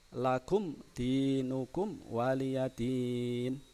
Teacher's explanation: ada mim mati bertemu Dal di mana mim matinya dibaca jelas dibaca terang di B jelas mim mati bertemu Dal itu dihukumi bacaan idhar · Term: idhar syafawi, Mem mati